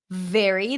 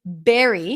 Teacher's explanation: that's a v sound bottom lip touching the top teeth very versus Berry where the lips close to a be all